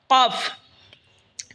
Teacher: কফ জিহ্বার গড়া তার বরাবর উপরে তালের সঙ্গে লাগে উচ্চারণ হবে কফ।